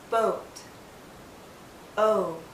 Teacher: Our lips are very rounded, but it's more open.